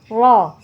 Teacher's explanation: sini dibaca tebal karena ro berharakat fathah jadi bacanya tebal ro ujung lidah kita menempel ke gigi seri kita yang atas di belakang gigi seri yang atas